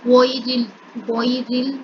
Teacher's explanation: غیرل، غیرل میں دیکھیں یہاں پر بھی یا لین ہو رہی ہے، یا ساکن سے پہلے زبر ہے، را کو اگلے لام کے ساتھ ملائیں گے. اب یہاں پر جو را ہے اس کے نیچے زیر ہے، اس کے نیچے زیر ہے، اس وجہ سے اس والے را کو باریک پڑھا جائے گا، موٹا کر کے نہیں پڑھا جائے گا.